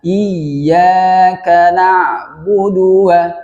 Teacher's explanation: Di budunya jangan dikasih mat karena dia tidak ada matnya di situ